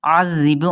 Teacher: کفارو مد اصلی بالواو کا قاعدہ، فَأُعَذِّبُهُمْ، فا اور حمزہ کی پیش کو لمبا نہیں کریں گے۔ عذب، عین کو وسط حلق سے ادا کرتے ہوئے زال کے ساتھ نرمی کے ساتھ پڑھیں گے